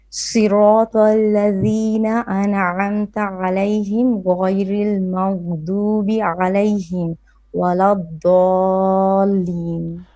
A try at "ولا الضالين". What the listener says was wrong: Dalin on this mad da 6 beats. It's hard to do 6 beats. Do it a bit longer.